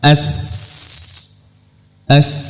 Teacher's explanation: huruf Shad Sin dan Za dia masih dari ujung lidah